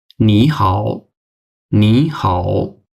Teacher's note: যেমন আ আপনার যদি ২ টা থার্ড টোন হয়, তো এটার একটা গ্রামার আছে। ২ টা থার্ড টোন হলে third tone plus third tone equal second tone plus third tone. যেমন নি, হাও আমরা কিন্তু এটাকে উচ্চারণ করার সময় এভাবে করব না।